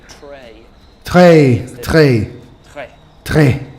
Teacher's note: So for the French accent, let's start with uvula trill. This is the sound from France.